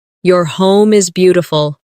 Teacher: Stress beautiful to make the compliment sound genuine.